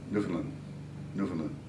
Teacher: You're not supposed to accent any one of the three.